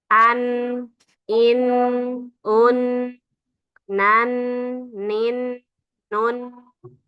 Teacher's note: Setelah lam ada nun. Nah, jadi nun ini langsung ujung lidah kita pasti menempel ke langit-langit atas sebelum gigi seri depan